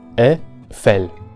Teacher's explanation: una combinación como EI generalmente produce a la vocal abierta E, o también, dependiendo del hablante, a la vocal cerrada E. En cualquier caso, nunca como I. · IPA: [ɛˈfɛl]